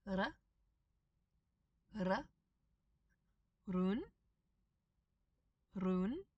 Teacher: this single R is a single tap of the tongue on the roof of your mouth